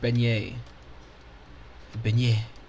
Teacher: A beignet with equal emphasis on both syllables.